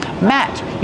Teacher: The letter T at the end of the word Matt is a stop T.